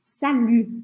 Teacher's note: o U do francês, esse U com biquinho